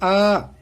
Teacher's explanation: अंतर ये है कि जब आप इसकी बोलते हैं अ, तो पहले रहता है बंद और फिर खुलता है आधा, इसलिए अर्ध विवृत कहलाता है, यानी आधा खुलने वाला।